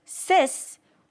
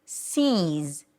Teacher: So the relaxed I turns into a high E, and the S turns into a Z.